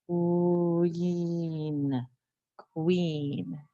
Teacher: Now, queen is a little tricky because we have two sounds that work together. They're always together. So the sounds are k, w, but we only have the k, w together with a special combination, queen.